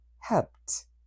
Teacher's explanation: There are three different pronunciations for the final ed sound of regular verbs in past. One t which is a voiceless sound